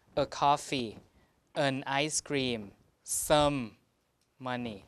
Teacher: articles again like a and the and some tend to be weakened